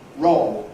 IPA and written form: rɒo (roll)